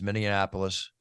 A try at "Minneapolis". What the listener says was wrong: Minneapolis. Minneapolis. Yeah, you said You said Mindianapolis, which is what people do all the time.